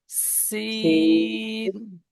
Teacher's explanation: সিটি মারার মতো উচ্চারণ হবে সিন